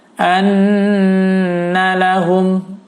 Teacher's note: Anna lahum, di sini gunnah nun, bacanya adalah ditahan 4 ketukan